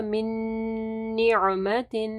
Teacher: نون ساکن کے بعد جو ہے نا نون ہے، ادغام آ رہا ہے غنہ کے ساتھ، تو یہاں پہ ادغام غنہ ہوگا.